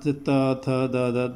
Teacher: जब त बोलते हैं तो आपकी जीभ दांत से टकराती है। देखिए दांत, त थ द, दांत से अगर जीभ नहीं टकराएगी तो त बोला नहीं जाएगा, इसलिए इनको दंत, इनका स्थान दंत होता है, इनको दंत कहा जाता है।